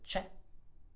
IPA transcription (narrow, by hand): t͡ʃe